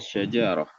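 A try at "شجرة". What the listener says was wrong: Oke, entas cuman nggak boleh baca panjang ya. Ja-nya syajaroh bukan syajaroh.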